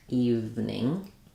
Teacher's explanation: in evening we have the e sound V and then we go right to the N